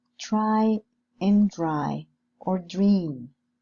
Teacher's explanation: the cluster try and draw are pronounced as affricates in RP or general British and in general American